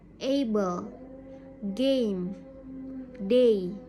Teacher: your mouth will start on the position of the uh sound and finish on the position of the e or e sound